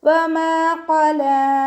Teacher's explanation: ഖാഫ് ഇസ്തിഅലാൻ്റെ ലെറ്ററാണ്. നല്ലോണം തഫ്ഖീം ചെയ്തിട്ട് ഉച്ചരിക്കുക. · ഇവിടെ മീമിൻ്റെ കൂടെ അലിഫ് മദ് വന്നു. 2 കൗണ്ട് നീട്ടിക്കൊടുക്കുക. ഖാഫ് ഇസ്തിഅലാൻ്റെ ലെറ്ററാണ്.